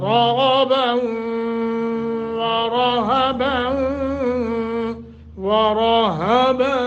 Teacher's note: را موٹا کرنا ہے، غین کو بھی موٹا کرنا ہے. باؤ آگے واؤ مشدد ہے، لمبا کریں گے یعنی گننا کریں.